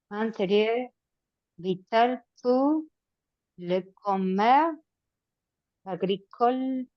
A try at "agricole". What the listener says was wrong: Agricole. Agricole, no pronuncias la E final. Le commerce agricole.